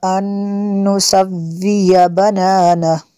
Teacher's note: نون ساکن کے بعد اور نون ہے حروف اربعہ میں سے، یہاں پہ ادغام ہوگا اس لیے یہاں پہ غنہ کریں گے۔